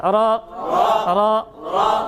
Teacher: র র র র র র, এরকম বলা যাবে না, তাহলে জিহ্বা অনেকবার বাড়ি খাচ্ছে। হ্যাঁ, একবার বাড়ি খায়।